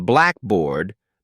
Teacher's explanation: in Blackboard the stress is on black not bored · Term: syllable stress